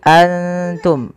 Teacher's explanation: samarkan nunnya kepada makhraj daripada huruf Ta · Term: huruf ikhfa